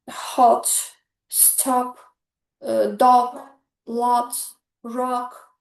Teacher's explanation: my mouth opens wide. My tongue stays low and back and uh the sound is quite soft.